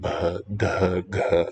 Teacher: Aspirated, voiced, a little tough to say, yeah. You have to get the glottis in a particular configuration. It helps to hear it some, and some pundits, I think, some people who recite it, will use a voiceless aspirate instead, or one where you can't really detect any murmur, but it should be buh, duh, guh, so.